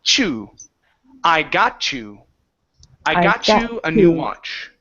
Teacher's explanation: if we have a word that ends with a T, okay, and the next word starts with a Y, the T changes to a CH.